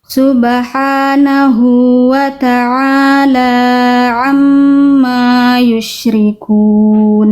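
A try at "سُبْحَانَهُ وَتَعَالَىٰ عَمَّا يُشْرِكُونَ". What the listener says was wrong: Lanya hati-hati jangan bablas, kepanjangan dikit Bunda. Lanya 2 2 rakaat ya. Tadi Bunda baca Subhanahu wa ta'ala hati-hati lanya cukup 2 rakaat sama sebagaimana Bunda melafalkan ain.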